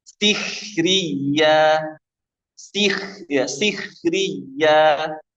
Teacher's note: Kho yang sukun sebelumnya kasroh pada asalnya dibaca tafkhim nisbi. Kecuali setelah kho tadi ada ro yang fathah atau dhammah.